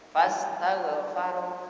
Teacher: Tauhnya dibaca dibaca tafkhim. Karena ghain termasuk huruf tafkhim. Huruf yang dibaca tebal.